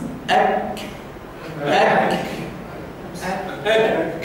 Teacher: اذا هذا الحرف بدايته شده ونهايته همس. اك اك اك قول اك اك اطلقهم هذا الهواء المحبوس. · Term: حرف الكاف